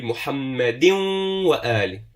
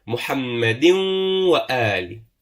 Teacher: merge the tanween with the waw